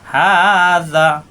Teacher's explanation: হা খাড়া দেবো একালিপ টান, হা মুখ খোলা থাকবে।